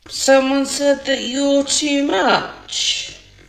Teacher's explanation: the word that she stresses the most out of all of these words in the sentence is much